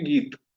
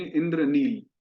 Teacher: आखिरी का जो स्वर वर्ण है, विशेष रूप से अकार, उसका हम उच्चारण छोड़ देते हैं और उसको ऐसे हलंत के रूप में उच्चारण करते हैं